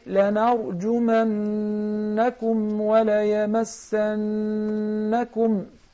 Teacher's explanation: because there is a ghunna on the noon which has shadda.